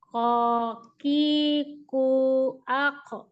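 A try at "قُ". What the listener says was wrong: Ako. Kayaknya kurang mundur ya Bu ya. Coba mundur sedikit lagi, sedikit.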